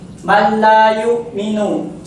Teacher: Yakni idgham bila gunnah. Yakni dibaca ditekan namun tidak dengungkan.